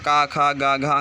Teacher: ये सब कंठ से उच्चारित वर्ण है और स्पर्श व्यंजन है।